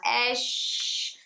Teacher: मतलब है कि ये सिफ़त पूरे मुंह भर के आवाज ऐश जब शीन को मुकम्मल तरीके से अदा करेंगे तो शन की आवाज पूरे मुंह में फैल जाएगी · जब शीन को मुकम्मल तरीके से अदा करेंगे तो शीन की आवाज पूरे मुंह में फैल जाएगी, तो मतलब सिफत तफशी इसके अंदर खुद ब खुद पैदा हो गई है। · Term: सिफत शफशी